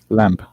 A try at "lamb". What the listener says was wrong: Where do we pronounce the B sound? With no B sound. No B sound. Lamb. Or lamb. With no B sound.